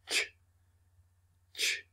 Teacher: It is about the middle of the tongue going up to the roof of the mouth blocking the air, then releasing it.